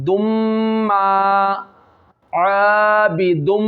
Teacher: दोनों होठ जब गुन्ना करेंगे मिल जाएंगे